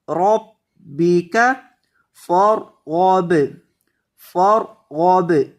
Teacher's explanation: را کو موٹا کریں گے با کو سختی کے ساتھ پڑھیں گے کیونکہ با مشدد ہے